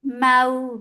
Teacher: Mau, wow lean. Make it soft when you are attaching fatha with wow. Mau without going into your nose.